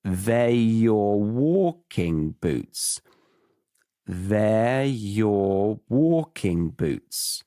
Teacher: they are your walking boots turned into they're your walking boots